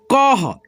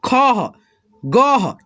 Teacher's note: विसर्ग को हम लोग ह के रूप में उच्चारण करते हैं।